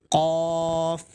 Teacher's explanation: قاف منہ گول کر کے پڑھیں گے، ہلکا سا، زیادہ گول نہیں کرنا، قوف نہیں کرنا ہے، قاف.